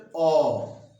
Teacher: अर्ध विवृत का मतलब जैसे अ, मुंह कितना खोला? कम खोला। अ, मुंह खोलने के आधार पे यह शब्द आया है।